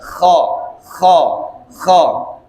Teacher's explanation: Nah, tempatnya di tenggorokan paling atas.